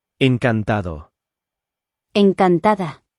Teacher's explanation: the hard sounds like the T and the D are made softer